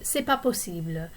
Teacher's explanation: Often you will hear people in quick conversation drop the ne of ce n'est pas possible. They might say c'est pas possible.